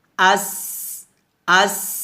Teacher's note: সিন শিন দুটোই হামসে হরফ বাতাস বের হবে